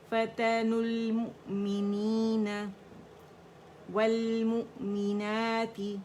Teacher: واو skip کر دیے پڑھنے میں، اور نون پہ جو ضمہ ہے اس کو لام سے جوڑ دیا ہے